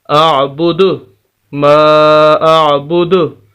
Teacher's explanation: अब ये बात देख लीजिए, दाल है मिसाल के तौर पर यहाँ पर, तो हम इसकी आवाज़ को साकिन होने की बिना पर जैसे वक्फ़ करेंगे दाल साकिन हो जाएगी, और हम इसकी आवाज़ को हिलाकर पढ़ेंगे, वही कलकला कहलाएगा